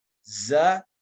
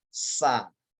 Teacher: Karena mereka satu makhraj ini. Sama bentuk formasi lidah, sama bentuk ujung makhrajnya, akan tetapi berbeda di tenggorokan. Yang satu dorongan pita suara, yang satu lagi adalah dorongan hamas atau laju angin.